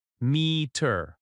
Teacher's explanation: Meter has stress on me. Me-ter. Slow version.